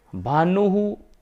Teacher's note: तो ऊ का उच्चारण स्थान होता है ओष्ठ, ओष्टौ। तो इस स्थान पर विसर्ग का उच्चारण स्थान भी ओष्टौ होगा, क्योंकि विसर्ग जिस स्वर के बाद आता है तो विसर्ग का उच्चारण स्थान वही हो जाता है